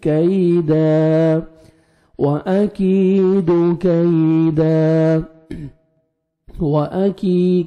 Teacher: کاف کو باریک پڑھنا ہے آف میں نہیں ساؤنڈ جانا چاہیے قوی نہیں پڑھنا ہے